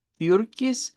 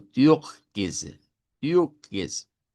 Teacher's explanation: Podemos hacerlo como con una r del español, turquoise, o podemos hacerlo con el sonido de la r uvular